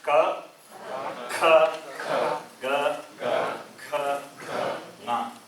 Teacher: So Uchcharana Sthanam is throat. Therefore they are called gutturals.